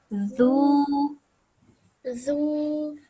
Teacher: Make it look like you're biting your tongue and then say it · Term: soft letter